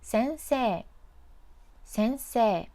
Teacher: This has the vowel e and i next to each other, so extend the se character like 先生, 先生, not 先生, 先生. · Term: long vowel